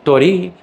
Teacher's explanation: with a short first syllable, but a long second syllable